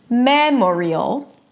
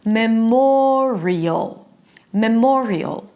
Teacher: But when we add the '-ial' suffix, okay, it's not 'ME-mo-rial', no, the stress does not remain on the first syllable. It shifts to the one syllable before the suffix, and then it becomes 'me-MO-rial', memorial.